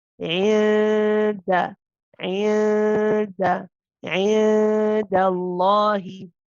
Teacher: the noon, that you do not go to the makhraj of the noon. Instead, you are close to the makhraj of the dal. You are not at the makhraj, you're not pressing on the makhraj of dal.